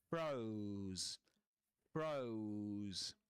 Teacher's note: This is a long diphthong here. Froze. Froze because of the final sound. The final z sound.